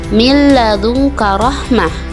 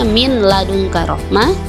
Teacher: 2-3 harokat yang kedua adalah idgham bilagunnah idgham bilagunnah di mana ketika nun mati atau tanwin bertemu dengan huruf lam atau ro maka Nun matinya itu dimasukkan tadi huruf lam atau ro tidak dibaca dengan jelas juga ya